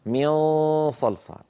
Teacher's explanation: عند صاد مثلا او ضاد او قاف فان صوت النون المخفاه يكون مفخما فالغنى غنه النون المخفاه تتبع ما بعدها في التفخيم والترقيق هذا